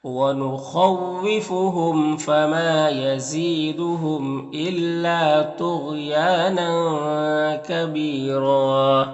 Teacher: یہاں پر ایک زبر کے ساتھ الف پڑھیں گے اور را کو پر پڑھیں گے